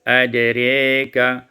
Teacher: Kemudian pada ayat yang ke-8, adraka imalatu fathatir ra wal alif, dibaca imalah fathah ra dan alif